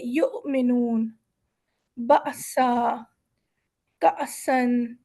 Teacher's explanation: جب ہم حمزہ کی آواز نکالیں گے تو ایک جھٹکا دے کے گزر جائیں گے